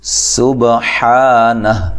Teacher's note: با پہ قلقلہ کرنا ہے، حا کو واضح نکالنا ہے